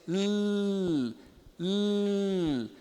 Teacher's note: É uma velarização. Então, o lateral normal nosso, né? Ele é feito com a ponta da língua na arcada alveolar.